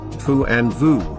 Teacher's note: are produced by a combination of the upper teeth and the lower lip which covers the lowerer teeth and AIDS the outflow of air